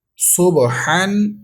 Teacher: صاد حروف مستعلیہ ہے، موٹا پڑھا جائے گا، ساتھ میں حروف صفیریہ بھی ہے، سیٹی کی آواز بھی آنی چاہیے۔